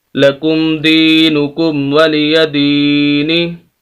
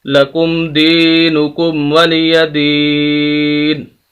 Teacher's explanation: وقف کریں گے، یہاں پر آیت ختم ہو رہی ہے، تو وقف کی حالت میں جو آخری حرف نون ہے اس کی جو زبر زیر پیش ہے اس کو ہم ختم کر دیں گے اور نون کو ساکن کر دیں گے، تو وقف ہوگا لکم دینکم ولی دین۔